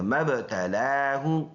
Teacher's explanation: ہا پیش ہو، سینے سے ادا کریں گے